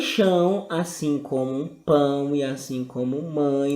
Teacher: Em chão, assim como pão e assim como mãe, nós encontramos o A. Logo, o A vai ser vogal e o O vai ser semivogal. A vogal, ela sempre vai ser a que soa mais forte.